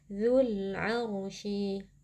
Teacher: Zu ini pada dasarnya terdapat mad tabi'i karena ada waw sukun yang sebelumnya berharokat dhammah. Kan tetapi karena kita wasol atau melanjutkan bacaan yang bertemu dengan alif lam, maka mad tabi'inya gugur.